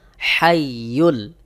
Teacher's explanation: এই হা কিন্তু হলকের মধ্যখান হইতে অর্থাৎ গলার মধ্যখান থেকে একটু চাপ দিয়ে উচ্চারণ করতে হবে এই হা যদি আপনি এই হার মত উচ্চারণ করেন করেন তাহলে